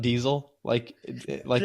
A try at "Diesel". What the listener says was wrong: terrible. Yeah, I hate it when you say Diesel. And the fact that you don't pronounce Diesel right. There's no Z in there.